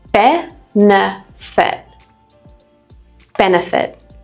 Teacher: So all of these have similar endings and the schwa is at the end of all of them. The first word, benefit, actually has two schwa sounds because it's three syllables.